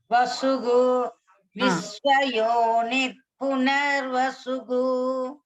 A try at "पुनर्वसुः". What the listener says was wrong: கு கிடையாது भगिनी. ஹ வர இடத்துலனா க சொல்லக்கூடாது. पुनर्वसुः